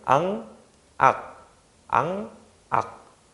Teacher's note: 이응이랑 기역이 발음되는 위치가 똑같죠. 그래서 이 친구는 우리가 여린 입천장 소리다.